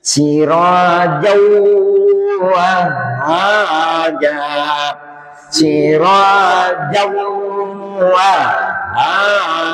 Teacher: Jadi bunyi n masuk ke huruf setelahnya. Jadi sudah hilang bunyi n-nya. Sudah hilang. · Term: idgham